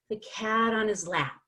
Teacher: we take out the H and it sounds like on is one word it sounds like one word linked in the same breath of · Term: linking